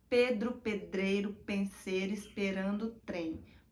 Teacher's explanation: o ar das oclusivas é barrado entre os lábios e os dentes